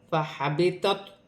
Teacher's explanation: تا کو تو کے ساتھ ملا کر پڑھا جائے گا. دونوں کا مخرج ایک ہے لیکن تو موٹا ہے، تا باریک ہے.